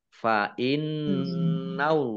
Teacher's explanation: nun tasdid dibaca gunnah atau mendengung ditahan 2 harokat